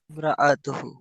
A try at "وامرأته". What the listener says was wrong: وامرأته أته عته نہیں ہے جب عین کا وقت ہے تو عین نکالتے نہیں ہیں جہاں پہ نکالنا نہیں وہاں نکالتے ہیں ٹھیک ہے جی وامرأته حمالة الحطب